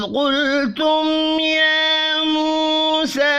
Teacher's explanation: وَإِذْ قُلْتُمْ قاف پر پڑھا جائے گا، لام ساکن پر قلقلہ نہیں کرنا. میم ساکن کے بعد یا ہے، اظہار شفی ہوگا، غنہ نہیں ہوگا. یا موسیٰ، یا واو مدہ اور پھر سا تینوں ایک ایک الف کے برابر کھینچ کر پڑھے جائیں گے.